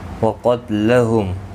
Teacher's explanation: قاف اور الف دونوں پر پڑھے جائیں گے. وقتلہم، قاف حروف مستعلیہ ہے، پر پڑھا جائے گا